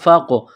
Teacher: فقاف زبر فق، قاف ساکن ہے، قاف پر قلقلہ کریں گے